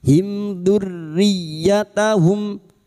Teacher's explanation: Mim sukun bertemu dzal idhar syafawi. Mim sukun dibaca jelas tanpa mendengung.